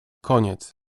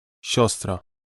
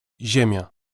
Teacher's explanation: This softening occurs whenever a consonant is followed by the letter I. But when I itself is followed by another vowel, it adds to the consonant a trace of the sounds y, as in yes, and is no longer pronounced as a separate syllable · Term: soft consonant